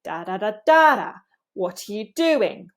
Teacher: in this question, we're actually falling in our intonation. In French, typically you rise on a question, but in English, for WH questions, you can actually fall.